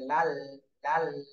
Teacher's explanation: এই লামের উচ্চারণ করতে গেলে তো জিহ্বার আগার কিনারা উপরের দাঁতের উপর আসতে লাগবে